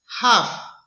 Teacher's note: It's glottal and fricative.